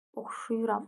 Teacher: Vurğu üçüncü hecanın üzərindədir.